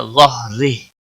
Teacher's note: रा ज़ेर की वजह से बारीक होगा और वक़फ़ की सूरत में हा साकिन पढ़ा जाएगा, वक़फ़ बिल इस्कान होगा। · हरूफ मुस्तालिया में से है, पुर पढ़ा जाएगा।